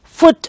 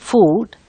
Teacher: the letters double O are pronounced with a short vowel in foot and a long vowel in food